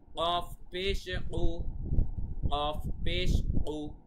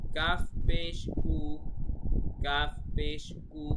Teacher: একটা হচ্ছে কফ গলার ভেতর থেকে, আর একটা কাফ নর্মালি। একটা হচ্ছে উ আর একটা হচ্ছে কু, ঠিক আছে?